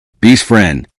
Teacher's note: You may expect best friend but the final T may become difficult to hear.